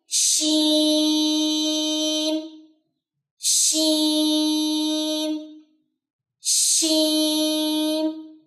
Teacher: اس میں چونکہ تفشی کی صفت ہے, آپ کی آواز پھیلنی چاہیے. اس کو کبھی بھی ایسے نہیں پڑھنا شین شین شین نہیں, شین.